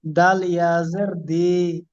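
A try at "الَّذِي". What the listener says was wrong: ওটা দাল, ওটা জাল বলেন, জিহ্বার আগা, উপরে দাঁত। জাল ইয়াজের জি, পড়েন আল্লাযী, পড়েন।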